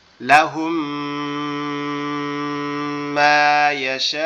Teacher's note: যদি আপনার মিম সাকিনের বামে আগের নিয়মটাতে ছিল কি বা, আর এখন যদি মিম সাকিনের বামে মিম থাকে তাহলে প্রথম মিমটাকে বাদ দিয়ে দ্বিতীয় মিমটাকে তাসদিদ সহ গুন্না, মানে তাসদিদ দিয়ে গুন্না সহ মিলিয়ে পড়তে হবে। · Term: ঈদগামে সাফাবি